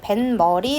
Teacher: 사이시옷 뒤에 니은, 미음이 결합하는 경우에 뱃머리 했으니까 미음이 들어간 거죠. 그 경우에는 니은으로, 사이시옷을 니은으로 발음한다